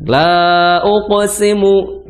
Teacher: Kemudian uqsimu ya. Di situ ada uqa, maka di situ harus dipantulkan atau dikolkolahkan. La uqsimu, bukan la uqsimu ya, la uqsimu.